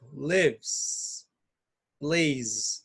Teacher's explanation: o som ele é mais voltado para o Z do que para o S